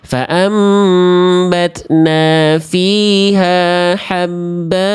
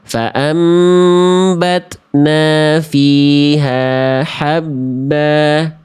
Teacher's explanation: Berwakof pada huruf yang berharokat fathatain, dia dibaca jadi 2 harokat. Namanya mad iwad.